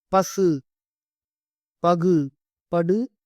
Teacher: படு ஒரு மாத்திரை அளவு முழுமையாக ஒளிக்கும் · தனக்குரிய மாத்திரை அளவிலிருந்து குறையாத உகரம் முற்றிய லுகரம் எனப்படும். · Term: முற்றியல் லுகரம்